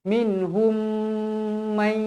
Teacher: Mim, nun, waw, ya, hukumnya idgham ma'al gunnah ataupun idgham bi gunnah. Jadi wajib dibaca dengung 2 harakat.